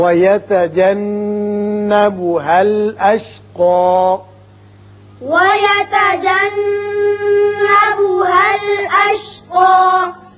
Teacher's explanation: یہاں نون مشدد ہے، غنہ کریں گے۔ اشقا اوپر کی طرف ایک الف کے برابر آواز کھینچیں گے وقت کی صورت میں